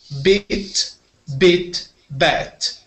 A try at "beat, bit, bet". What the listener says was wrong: Beat and bit. when you said these ones, they sounded the same.